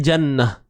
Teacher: Jannah, bila kita matikan dia akan berubah kepada bunyi ha. Jangan jannat. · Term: ta marbutah